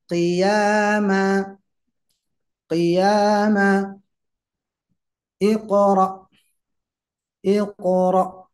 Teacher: pantulannya juga tetap terdengar qnya